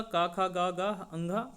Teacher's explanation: ये का वर्ग पूरा, का खा गा गा अंगा, और उसके बाद हा और विसर्ग, ये हमारे कंठ में आएंगे